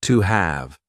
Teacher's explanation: at the beginning of words he said AV instead of have he also used a linking W sound to join to and have together